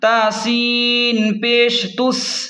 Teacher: سین سیٹھی کو تیز پڑھیں